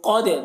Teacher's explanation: دال میں قلقلہ ہوگا